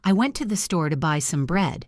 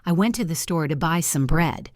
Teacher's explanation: The function words, I went to, the to, some, are spoken very quickly and quietly. The content words store, buy, and bread are louder, longer, and clearer.